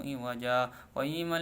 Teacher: saktah yaitu cara membacanya berhenti tanpa mengambil nafas